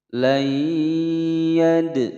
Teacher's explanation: Hukum bacaan idgham bi gunnah, dimasukkan dan didengungkan selama dua ketukan. Layyad, ada huruf dal berharokat sukun berada di tengah-tengah kalimat, qalqalah sughra, dipantulkan